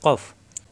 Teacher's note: জিহ্বার গোড়া থেকে উচ্চারণ কফ